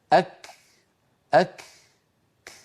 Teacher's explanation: هل سمعتم هذا النفس الذي تبع حبس صوت الكاف